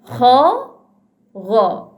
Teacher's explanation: yang berada di hujung kerongkong kita, itulah dia huruf Kha dan juga huruf Gha